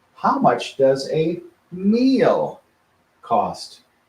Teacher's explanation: we stretch out the word meal now the rule is you can stretch out any word anytime